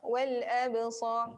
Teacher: Lantunan yang kecil. Sukun berada di tengah perkataan, di tengah kalimah. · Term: qalqalah sughra